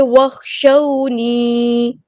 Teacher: اور یہاں پہ جو ہے یا مدہ آئی ہے، یا ساکن سے پہلے زیر ہے، تو اس کو ہم وخشونی ایسے نہیں پڑھیں گے، وخشونی لمبا کریں گے ایک الف کے برابر